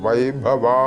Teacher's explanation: ഇവിടെ ഭ ശ്രദ്ധിക്കണം മഹാപ്രാണനാണ് വൈഭവ എന്ന് നീട്ടേണ്ടതാണ്